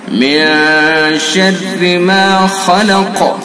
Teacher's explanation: خا کو پر کریں گے اور قاف کے اندر قلقلہ کریں گے